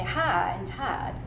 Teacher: people within the red line variably produce ion gliding, which means that for words like high and tide, you can say ha and tad